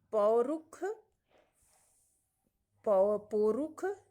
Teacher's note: कुछ लोग मूर्धन्य श को ख उच्चारण भी करते हैं, इसीलिए ये डी वाले में पौरुख दे दिया है।